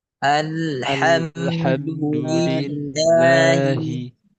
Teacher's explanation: keadaan lafzul jalla Allah dibaca tipis atau tarkik.